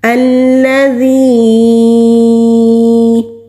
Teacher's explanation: ذال کو جب ہم ادا کرتے ہیں تو زبان کی ٹپ اوپر والے سامنے کے جو 2 دانت ہیں وہاں پر نرمی کے ساتھ ٹچ کریں گے تو ذال ادا ہوگا۔